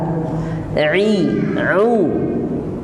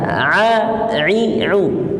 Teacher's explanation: Au memang kena tempatnya di lisanul mizmar yang terletak di tengah tenggorokan. Terasa dia bergerak. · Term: huruf ain